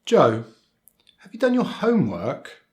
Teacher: the rising intonation, and particularly at the end of the question